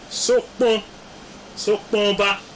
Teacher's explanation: But the nasality is not elided with it, and that is why you now have that is the nasality is transferred to the o